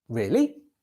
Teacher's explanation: you can use a rising tone to express doubt